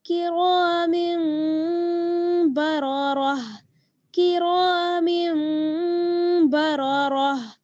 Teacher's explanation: हल्का सा गुन्ना करेंगे और इख्फा, गुन्ना और इख्फा यहाँ पर दोनों चीजें होंगी। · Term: इक़लाब